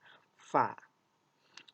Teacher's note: Bibir atas dan bibir bawah tidak terlalu ditutup. Kemudian ketika mengucapkannya ada udara yang terkeluar. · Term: huruf fa